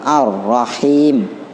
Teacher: Nah, sifatnya juga dia sama, menyimpang, dekatan gitu loh, lam sama ro. Jadi lamnya hilang, masuk ke ro